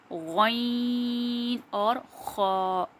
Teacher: हलक के ऊपर वाले हिस्से से गैन और खा अदा होगा